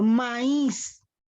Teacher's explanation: la sílaba tónica es is por qué porque ésta se pronuncia con mayor intensidad la vocal tónica es la y en este caso lleva tilde